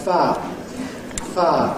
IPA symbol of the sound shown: faː